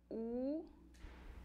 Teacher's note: Em relação à posição da língua, U é posterior, tá? U, a língua está recuada lá para trás. E com relação ao arredondamento dos lábios, U é arredondada, então é uma vogal. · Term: vogal posterior